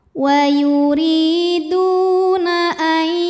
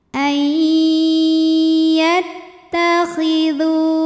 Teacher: Karena ada nun sukun yang menghadapi huruf ya, maka nunnya dileburkan ke ya, ai disertai bunyi dengung. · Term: idgham bi gunnah